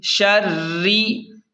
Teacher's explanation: شین را زبر شر، را زیر ری، شری. را کو باریک پڑھیں کیونکہ را کے نیچے زیر ہے